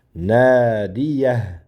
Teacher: Nadan keyin mana bu yerda alif bor chozamiz buni ikki harakat. Nadiyah.